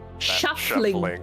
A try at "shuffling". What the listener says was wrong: Oh, shuffling. I thought you said shovel. Your V and F's are too similar.